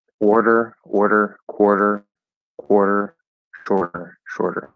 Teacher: we had the or and then we have the flash d even if it's spelled with a t it doesn't matter in American English it's flapped D into ER